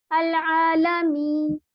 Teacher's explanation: جب اس کو وقف کیا جاتا ہے تو اس کو ہم 3 الف کے برابر پڑھ سکتے ہیں. 1 الف، 2 الف یا 3 الف، یعنی اتنا ہمارے پہ اس میں تھوڑی سی گنجائش ہے.